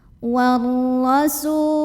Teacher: ra-nya dibunyikan secara tafkhim karena ra-nya berbaris fathah, barisnya di atas. Maka bacanya ditebalkan, pangkal lidah dinaikkan.